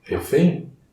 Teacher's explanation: A pronúncia correta é EI, refém, com um som nasal. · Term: Ditongo decrescente nasal, ditongo decrescente nasal